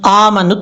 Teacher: حمزہ کے اوپر کھڑا زبر لمبا کریں گے ایک الف کی مقدار